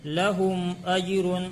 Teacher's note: ہم میں اظہار شفوی ہوگا، میم ساکن کے بعد حمزہ آیا اس لیے اظہار شفوی ہوگا، میم کو ظاہر کر کے بغیر گنہ کے پڑھیں گے